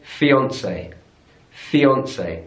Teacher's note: on the final syllable in British English we say fiancee fiancee so stress on the middle syllable